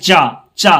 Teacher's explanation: चा वर्ग के जितने भी वर्ण है ये तालू से आते हैं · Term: तालव्य